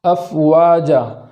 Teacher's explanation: حمزہ کو جھٹکا کے ساتھ پڑھیں گے اور فا پر جو جزم ہے اس کو متحرک ہونے سے بچائیں گے۔ افواجا نہ ہو بلکہ افواجا۔